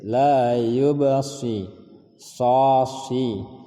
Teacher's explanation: sa ketika berbaris bawah ditipiskan sedikit